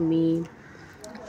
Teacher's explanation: दोनों होठों के तली वाले हिस्से को मिलाकर जुदा करने से अदा होता है मीम